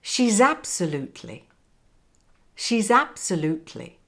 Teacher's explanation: link between the last s in she's and the a in absolutely